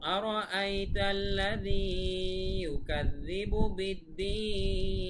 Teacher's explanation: বিদ্দীন, দিন এখানে 3 আলিফ টান হবে